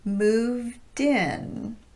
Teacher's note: If we take the phrase moved in, as in they moved into their new house, a native speaker would link it like this: moved in. That final D becomes the beginning of the word that starts with a vowel.